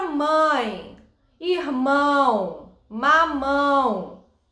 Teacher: em determinadas palavras o seu nariz ele vibra ao falar era as palavras elas têm um som nasal por quê porque para produzi-las a gente não utiliza apenas a boca a gente utiliza também o nariz